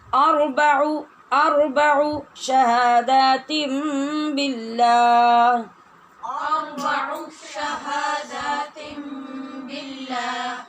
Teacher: اس کو اربعو نہیں پڑھنا، یہاں پھر آگے واو لگ جائے گی اور یہ غلط ہو جائے گا